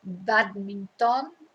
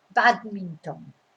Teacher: your stress is on the bad because that's where the accent is